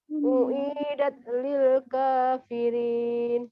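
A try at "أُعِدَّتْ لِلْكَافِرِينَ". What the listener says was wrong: Tekan pada dalnya. Uiddat lil kafirin. Uiddat. Uiddat.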